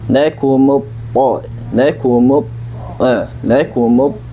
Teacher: Di sini ketika mim berharokat dhammah masuk ke huruf ta. Huruf ta itu adalah huruf tebal atau huruf tafkhim, dan dia memiliki sifat itbaq. Selain sifat itbaq, dia pun memiliki sifat isti'la, maka kita keluarkan isti'lanya dan itbaqnya.